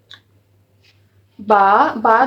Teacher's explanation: با دونوں ہونٹوں کے تری والے حصہ سے ادا ہوتا ہے۔ اب جو ہمارے دونوں ہونٹوں کے گیلے حصے ہوتے ہیں نا، جب ان کو ہم آپس میں ملاتے ہیں نا تو پھر حرف با ادا ہوتا ہے۔ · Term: مخرج